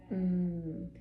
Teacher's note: You're actually pushing air up and through your nose out of your nose like that.